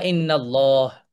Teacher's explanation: যদি আল্লাহ শব্দের পূর্বে যে শব্দটি আছে সেই শব্দটির শেষ অক্ষর যদি ফাতহা দিয়ে শেষ হয় অর্থাৎ আল্লাহ শব্দকে যদি আমরা ফাতহা দিয়ে যোগ করি ফাতহা যুক্ত বর্ণ দিয়ে যদি যোগ করি তাহলে আল্লাহ শব্দটি মোটা হবে মানে হেভি হবে